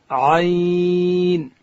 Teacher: عین ادا کیږي د ستوني په مابینځ کښې